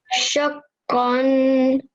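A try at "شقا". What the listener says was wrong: A little bit longer on the qaf, okay? Shaqqan.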